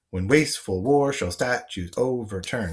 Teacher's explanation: the rough pattern of the syllables in this line is that every other syllable has a stress to it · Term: iambic